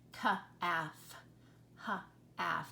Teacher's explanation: I am not hearing an L when I say that word, calf. The L is a silent consonant.